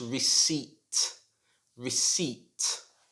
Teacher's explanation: how would you pronounce this word this word is difficult because it has a silent letter in it the p is silent so it should not be pronounced